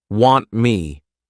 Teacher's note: we're not pushing out that t sound this is called a flat T and it makes it easier to connect to the